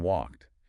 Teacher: Make sure that ed sound, which sounds like T here, is audible.